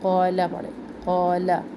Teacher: क़ा लंबा है लेकिन ला लंबा नहीं है, इसको ला ना पढ़े, क़ाला पढ़े, क़ाला।